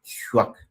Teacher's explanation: the palatal labial form of the kye sound